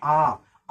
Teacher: होता है तो यहां देखेंगे दीर्घ स्वर होता है आ आ अ की अपेक्षा जब आ बोलेंगे तो डबल समय लग रहा है